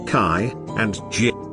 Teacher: there is a complete blockage of air followed by a gradual release. That is, in producing africats, the flow of air is obstructed and accompanied by a small opening that allows the built-up air to gradually squeeze its way into the atmosphere.